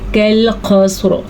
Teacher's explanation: ایک کاف باریک دوسرا موٹا, یہ باریک کاف ہے اور یہ موٹا قاف ہے